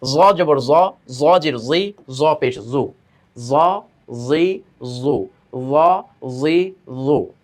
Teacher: জিহ্বার আগাটা দাঁতের আগার সঙ্গে গিয়ে লাগবে, তাই না, উপরে দাঁতের আগার সঙ্গে। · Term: 13 নম্বর মাখরাজটা